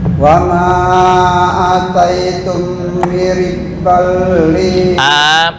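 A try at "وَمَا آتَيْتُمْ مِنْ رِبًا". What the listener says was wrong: satu alif ya. Ataitum.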